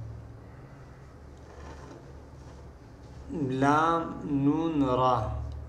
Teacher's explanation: जबान का किनारा और दांतों की जड़ के ऊपर तारू की जानिब वाले हिस्से से यह तीन रूफ अदा होते हैं